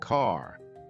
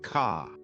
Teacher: American accent often uses a strong R sound. Words like car sound like car. British accent tends to soften the R. So car sounds more like ca.